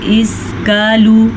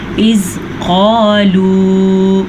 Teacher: ہم نے اس کو پڑھنا ہے موٹے قاف کے ساتھ، ادھر لکھا ہی موٹا قاف ہے۔